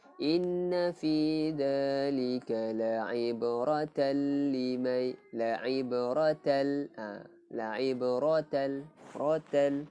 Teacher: tanwin bertemu lam, hukumnya idgham, memasukkan tapi tidak dengung